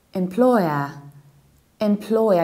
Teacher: You stress the second syllable and you reduce the beginning.